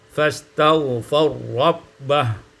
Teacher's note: idghamur ra fi ra, diidghamkan ra pada ra dengan idgham yang kamil, sehingga kita baca fastaghfar rabbah.